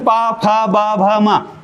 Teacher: अच्छा ना तो दंत है मतलब दंत से उच्चारित होता है ना बोलते वक्त द और ओष्ठ अब जैसे प फ ब भ म आप होठ पकड़ के प बोल के बताओ होठ पकड़ लो और प बोल के बता दो तुम्हारे में दम हो तो नहीं बोल सकते क्यों क्योंकि प बोलते वक्त होठ मिलेंगे ही इसलिए इसको ओष्ठ ओष्ठ से उच्चारित बोला जाता है · पा बोलते वक्त होठ मिलेंगे ही, इसलिए इसको ओष्ठ से उच्चारित बोला जाता है